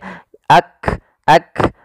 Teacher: huruf kafnya itu sendiri ada namanya hams yaitu mengalirnya nafas